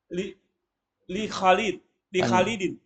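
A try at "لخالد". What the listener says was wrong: Panjang kha-nya. Kha-nya panjang. Hati-hati panjang pendek ya.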